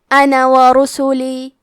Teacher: کلمت انا کے آخری میں مد الف ہے لیکن ہمیں مد کو ظاہر نہیں کرنا ہے. حرف النون کو صرف زبر سے پڑھ کے کلمت ورسولی پڑھیں گے.